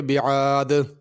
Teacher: اس دال پہ قلقلہ ہوگا، یعنی تھوڑی سی اس کو حرکت دے کے پڑھا جائے گا، بعاد نہیں بلکہ بعاد۔